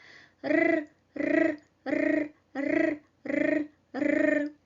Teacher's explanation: The tip of the tongue touches the alveolar zone and produces vibration.